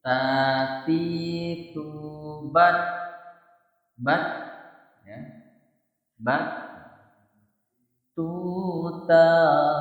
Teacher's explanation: ta itu huruf ta ya jadi hams jadi ada aliran napasnya ya tetapi tidak berlebihan